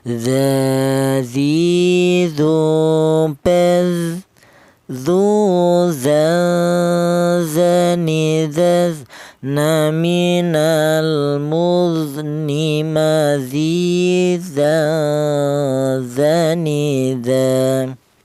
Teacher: Huruf dzal ini keluarnya huruf berasal dari ujung lidah menyentuh ujung gigi seri bagian atas.